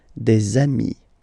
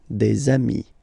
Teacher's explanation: if you make the liaison, so the link between the two, you will get des amis